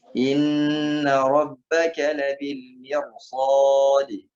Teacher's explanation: Ini ingat tebal di ra, tebal ya karena bertemu dengan sad. Mir sad, jangan mir sad karena bertemu dengan sad di depannya maka dibaca tebal.